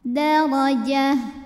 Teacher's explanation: Huruf ra dibunyikan secara tafkhim karena barisnya fathah, maka bacanya tebal. Darajah. Tak marbutoh jika berhenti jadi hak sukun walaupun harokatnya fathah tanwin.